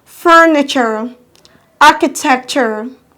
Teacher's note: The first syllable is receiving the loudest stress, so you sound or you say the syllable louder than the other syllable.